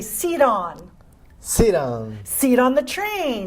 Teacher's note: Now, what you're actually gonna do is you're gonna make that t a flap sound